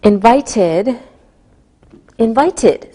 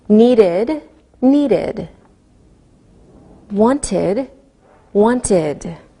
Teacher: When the last sound of a word is a D or a T sound, we pronounce the ed like id.